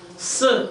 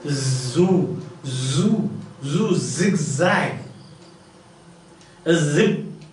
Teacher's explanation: S, there is no vibration. But when you say zoo, zigzag, zip, so that is vibration.